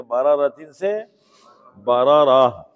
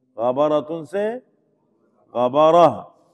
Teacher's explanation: جیسے عنبن سے 1 زبر ہٹا دیں گے، عنبن سے عنبا، کتابن سے کتابا، قلمن سے قلما، اور گول تا پر وقف کریں گے تو ہا بن جائے گی